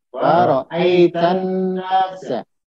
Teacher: Jadi nunnya itu tasdid, ya. Nunnya tasdid maka digunakan minimal 2 harokat.